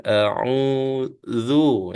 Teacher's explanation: Kalau kita sebut a'udzu dengan dua gigi kita atas bawah tu rapat, itu tidak tepatnya bacaan tu, seolah-olah ada za, huruf za di situ, tapi huruf ini adalah huruf za ya, lebih nipis bacaan dia, lidah yang kita halakan ke gigi kita kat depan. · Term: za yang nipis